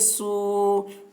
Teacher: واو ساکن سے پہلے پیش ہے، واو مدہ ہوا، اس لیے واو مدہ کو ایک الف کے برابر کھینچ کر پڑھیں گے